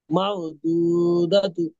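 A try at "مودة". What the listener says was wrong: দু না, উ। উ।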